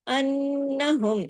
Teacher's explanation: نون پہ تشدید ہے، غنہ ہوا